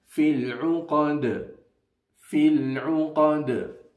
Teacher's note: Dal, with a sukoon on it because we are stopping, will be read with the quality of qalqala.